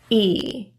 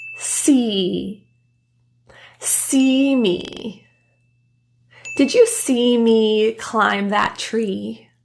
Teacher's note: e the jaw is closed to help press your tongue higher the tongue is very high and tense and forward your lips for this sound are spread in a very tense smile position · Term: the e sound